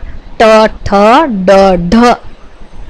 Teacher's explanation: અને આ ટ, ઠ, ડ, ઢ ના ઉચ્ચારણમાં જીભનો આગળનો ભાગ પેઢા કે તેની ઉપરના કઠણ તાળવાની પૂર્વેના કમાન જેવા ભાગને સ્પર્શે છે. એ રીતે આ જે વ્યંજનો છે એ મૂર્ધન્ય સ્પર્શ વ્યંજનો છે અને એને મૂર્ધન્ય વ્યંજનો તરીકે પણ ઓળખવામાં આવે છે.